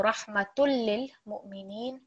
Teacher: Here we are not hearing the dhamma then at all when we merge it with the lam shaddad. · there's a soft jerk on the hamza because of the sukoon